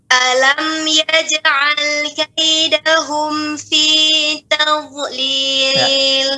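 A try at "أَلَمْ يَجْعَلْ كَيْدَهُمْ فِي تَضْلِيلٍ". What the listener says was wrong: Enggak, itu lari ke zo. Perhatikan, jangan ujungnya, tapi tepinya. Ya, itu masih.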